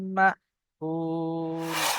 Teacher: ওয়াও সাকিনের পূর্বে এখানে পেশ এসছে, ওয়াও মাদ্দা একালি পরিমাণ টান দিয়ে পড়তে হবে। এখানে যখন ওয়াকফ করব তখন এখানে সাকিন হয়ে যাবে।